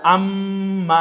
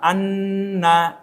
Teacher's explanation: এই যে গুন গুন করলেন এটার নাম গুন্না একটু নাকের মধ্যে নিয়ে আনা